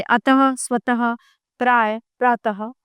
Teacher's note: विसर्ग इसका उच्चारण ह के समान है होता है। इसका प्रयोग केवल कुछ तत्सम शब्दों में ही किया जाता है, जैसे अतः, स्वतः, प्राय, प्रातः आदि।